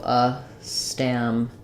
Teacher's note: We have our a vowel there, letter A says a like cat, and then the ede says the e sound, so it would be a stam. Actually, the stress is on pede here, not on stam.